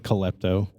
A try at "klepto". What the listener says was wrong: I like how you added a syllable to the word. Not klepto, klepto.